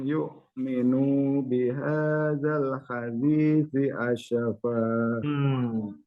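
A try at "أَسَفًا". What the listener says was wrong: Asyafa apa asafa? Sin ya.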